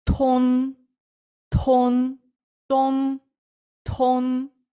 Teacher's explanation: так само тут ми маємо максимально оглушений д то тон а тут у нас аспірація т плюс Не бійтеся додавати х він повноцінно тут відіграє роль